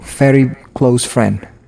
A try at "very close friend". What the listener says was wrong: You want to say there, very close friend. You want to pronounce the V as a V, very.